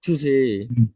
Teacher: ডেইতে stress, টুটা হালকা করে টাচ হবে